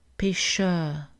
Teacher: Le R en fin de syllabe n'est pas prononcé, la voyelle est allongée.